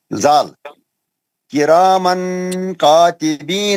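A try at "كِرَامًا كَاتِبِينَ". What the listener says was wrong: نہیں آپ کا اکفا صحیح نہیں ہوا کیسا پڑھنا ہے کیرامن ناک سے پڑھنا ناک سے لمبا کرنا غنہ کرنا کیرامن کاتبین نون کا آواز تھوڑا بھی نہیں آنا نون کا آواز تھوڑا بھی نہیں آنا کیسا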